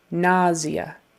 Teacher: it's really pronounced nausea with more of a Z